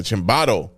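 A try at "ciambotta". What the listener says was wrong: I think you pronounced an A in there when it's an O.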